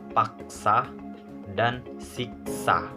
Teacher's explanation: K aksen merupakan bunyi tak lepas jika terdapat pada tengah kata dan diikuti oleh konsonan lain